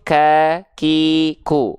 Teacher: huruf Kaf di sini dia kadar nafasnya bukan mengalir tapi hanya berupa percikan-percikan nafas saja